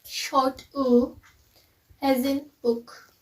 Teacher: short uh as in book and it's voiced and it's place of articulation is back